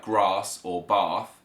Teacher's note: It's a very general difference, but is the ah sound or ah. So in the south we have a long a, so words like grass or bath.